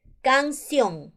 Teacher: vocal abierta en la voz por eso yo coloco tilde ahí canción mayor fuerza de voz en la última sílaba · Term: palabra aguda